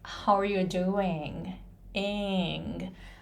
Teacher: in is the final syllable in the final word and that is pronounced really long at the end